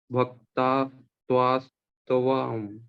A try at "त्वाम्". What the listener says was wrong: जब आप तवा बोलोगे तो त पूरा हो जाएगा, यहाँ पे तो आधा है ना, त्वाम, त्वाम, देखो त म नहीं है ना, न है, हलंत न।